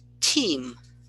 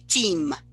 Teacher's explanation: when the T starts a syllable that is followed by a vowel, we pronounce it in English with a little bit of a puff called aspiration